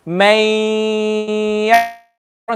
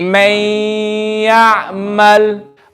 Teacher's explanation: I'm reading it with the gunna, I'm reading it extra longer, and I'm pushing the sound through the nose.